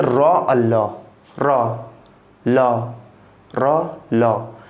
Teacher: र और ल हमारे मूर्धा से आ रहे हैं, मूर्धा से, मूर्धा से।